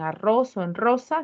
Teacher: En arroz o en rosa se representa como una vibrante múltiple.